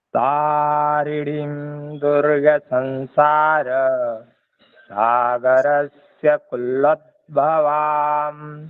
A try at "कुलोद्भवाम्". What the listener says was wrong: कुल्लोत नहीं है ना, कुल्लोत कहाँ? कुलोत कुलोत भवान।